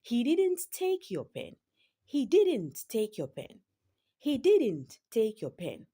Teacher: The word didn't is stressed in that sentence.